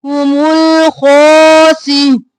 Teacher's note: खो सी मोटा और खींचेंगे, हुमुल खासिरून, रो मोटा।